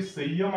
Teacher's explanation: मित्रांनो असा संयम जो शब्द आहे हा य आपला अर्धा आहे संयम ह्या अनुस्वाराचा उच्चार कसा होतो य सारखा होतो म्हणून त्याला काय अर्धा अनुस्वार सुद्धा म्हणलेला आहे मित्रांनो कशाला य